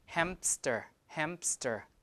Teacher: I usually include the P there hamster hamster like that that's because the p matches the M · the P matches the M in terms of place of articulation